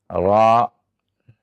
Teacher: ketika kita membaca dengan fathah, ra, ya, kita membacanya dengan tebal.